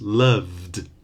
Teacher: Beloved is a good one because there is the verb love, and the past of love is loved. Okay, love ends in a voice sound, so the final ed is d, loved. But there is no verb to beloved, so the adjective that you're looking here is beloved, my beloved ones, okay?